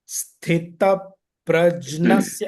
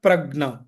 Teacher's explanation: So the nasal sound of the chavarga from the palate.